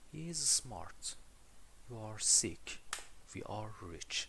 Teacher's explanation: برای جملات خبری مثل همین he is smart, you are sick, we are rich ما باید یه intonation falling داشته باشیم، یعنی صدامون رو به پایین باشه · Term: falling intonation